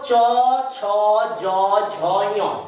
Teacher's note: তালব্য ধ্বনি। তালব্য মানে কি? তালু, তালুতে যাচ্ছে, জিহ্বাটা কোথায় স্পর্শ করছে বাবা? তালুতে করছে।